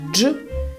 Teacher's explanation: it is soft, so the middle of the tongue goes up